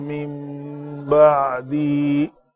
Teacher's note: نون ساکن کے بعد با ہے تو اقلاب کا قاعدہ ہے، اس نون کو میم سے ہم نے بدل کر پڑھا